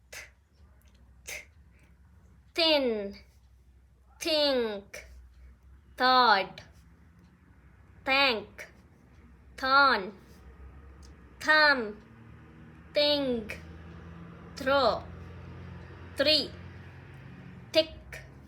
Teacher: Now see some words with voiceless sound of th, soft sound of th.